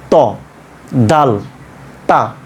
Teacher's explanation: জিহ্বার আগাটা ওপরের দাঁতের গোড়ার সঙ্গে লাগিয়ে দিবেন